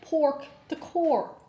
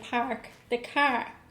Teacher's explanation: an extreme south dublin accent will say pork the core whereas a north dublin accent will say park the car